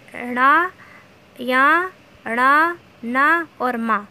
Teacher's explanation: नासिक्य व्यंजन जो हमारे नासिका से बोले जाते हैं, यानी कि जो नाक की सहायता से बोले जाते हैं, वो नासिक्य व्यंजन कहलाते हैं।